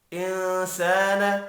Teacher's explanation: نون ساکن کے بعد سین ہے، اخفاء حقیقی ہوگا۔ الف مدہ کو ایک الف کی مقدار میں کھینچ کر پڑھیں گے۔